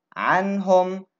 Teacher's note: Noon is followed by a ha, which is one of the throat letters, so you say the Noon clear and you don't add Ghunnah.